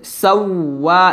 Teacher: সিন গিয়ে ওয়াওকে ধরবে ঠোঁটটা গোল করে ধরতে হবে